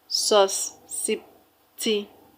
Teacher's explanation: The stress is on the third syllable from the end of the word.